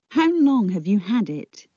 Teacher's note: Long and had are stressed. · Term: sentence stress